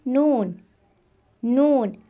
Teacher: जबान का किनारा कुछ नरम अंदाज में ऊपर की जड़ों से मिलता है यह देखिए जबान है जबान का किनारा जिसे हम तरफे लिसान